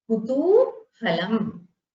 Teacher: Ku is a short ukara. Tu has a dirgha ukara.